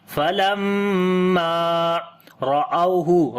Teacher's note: Falamma, there is shad sign on the meme, we make gunna and also we long one alif, and after the meme there is alif madda, we long one alif as well, as we say falamma ra'awhu. Ra we read in heavy sound due to fatha sign on it. This waw is waw lean, we read soft sound.